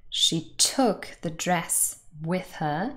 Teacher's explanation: Took and dress have the main stress in the sentence.